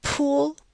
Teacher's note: So when you say pool, you should be able to feel a small puff of air immediately after the P. This is aspiration, and we transcribe it using a superscript H.